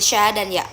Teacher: bunyi dari lidah tengah dan langit-langit keras